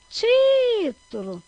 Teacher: Qual é a sílaba mais forte? É o ti. Então, como é o ti, ela é a antepenúltima. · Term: sílaba tônica